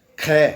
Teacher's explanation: यहाँ हवा अधिक बार निकलती है, इसका मतलब हवा अधिक खर्च होती है जब इस ध्वनि का या इस ध्वनि का उच्चारण करते हैं, क्योंकि इनमें हकार है। कै में ही यदि है मिला दिया जाए तो ख ध्वनि बनती है